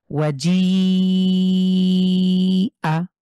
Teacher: কিন্তু এই মাদের হরফের পরে এক আলিফের পরে যেহেতু গোল হামজা আছে, সুতরাং এইখানটাতে আমরা 4 আলিফ টেনে পড়ব। এই জি কে 4 আলিফ টেনে পড়ব। এক আলিফের জায়গায় 4 আলিফ।